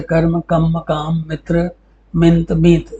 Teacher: व्यंजन द्वित्व के स्थान पर एक व्यंजन हो जाता है, अतः उस व्यंजन की अनुपस्थिति के कारण हुई मात्रिक क्षति की पूर्ति के लिए पूर्ववर्ती स्वर दीर्घ हो जाता है